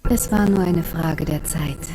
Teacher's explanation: What is the vowel sound at the end of Frage? If you guessed a schwa, you're right.